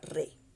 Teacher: En este caso, por ejemplo, rey va a formar un diptongo y una sola sílaba